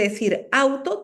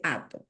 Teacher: de diptongo cualquier diptongo la unión de dos vocales la e la simplifica y elimina uno de los sonidos vocálicos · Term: simplificación de diptongo